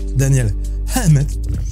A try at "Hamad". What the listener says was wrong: Ah non, le H est après.